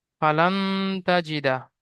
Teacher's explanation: ফায়ের উপর জাবার আছে, জাবারটি হারাকাত, হারাকাতে তাড়াতাড়ি পড়তে হয়, টান দেওয়া নিষেধ।